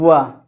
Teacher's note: या हमारा तालव्य है, व हमारा दंतोष्ठ है, यानी व मतलब दंतोष्ठ वर्ण है, यानी कि व का उच्चारण करते समय हमारा जो दांत है ओष्ठ को स्पर्श करता है